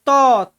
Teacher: दंत होता है यानी कि त त में देख रहे है जीभ का है वो दांत के पिछले हिस्से से चिपक रहा है